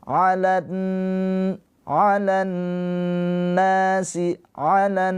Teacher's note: nun yang bertasydid ini adalah ghunah musyaddadah. Ditahan dua harakat. · Ciri-ciri alif lam syamsiyah itu setelah alif lamnya ada tasydid. Maka dari la ini langsung ke nun ini ke na. Enggak dibaca alif lamnya. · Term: gunnah musyaddadah